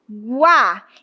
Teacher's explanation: Então esse U é mais fraco e o a é mais forte. · esse U é mais fraco e o A é mais forte. Então, de fato, eu tenho um ditongo que cresce, ditongo crescente.